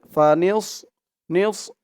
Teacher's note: নিস বললে কিন্তু সদের জায়গায় সিনের উচ্চারণ চলে আসবে